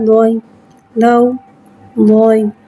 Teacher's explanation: یا ساکن سے پہلے زبر آ رہا ہے، یالین ہو رہا ہے، لہذا یالین کو بغیر کھینچے بغیر جھٹکا دیے نرمی سے معروف پڑھیں گے، زبر کو منہ کھول کے ادا کر کے پڑھیں گے۔